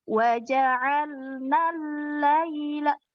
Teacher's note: Dia tasydidnya didapatkan tapi tidak boleh ditahan lama.